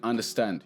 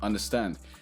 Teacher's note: the under comes very very quickly stand is the stress sound that stays around for a little bit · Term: stressed vowel